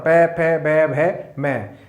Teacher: पै फै बै भै मैं, ये 5 जो वर्ण हैं वो ओठों की सहायता से बोले जाते हैं। तो ये पै वर्ग और उपदमानीय, पै से पूर्व का अर्ध विसर्ग और फै से पूर्व का अर्ध विसर्ग, ये ओठ से उच्चारित किए जाते हैं। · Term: ओष्ठो